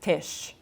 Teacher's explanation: But in Yiddish, aspiration is supposed to be disallowed.